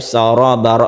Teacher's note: Kemudian fakanat saraba, ini juga satu alif saraba, roknya agak ditebalkan karena tafkhim, rok berfathah